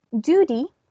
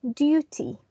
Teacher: US English speakers have D where British English has T